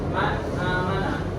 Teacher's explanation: Jadi ini termasuknya idhar halqi. Jadi terang dibacanya, tidak dengung